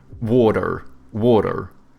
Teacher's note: Americans, they have like soft T's and then they pronounce their R's